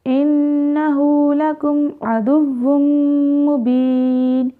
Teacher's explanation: انہ مشدد نون ہے تو یہاں پہ ہم غنہ کریں گے۔ نون تنوین کے بعد حروف یرملون میں سے میم ہے تو یہاں پہ ہم نے ادغام مع غنہ کرنا ہے۔